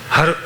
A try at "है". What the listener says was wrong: Har nahi. It's hai.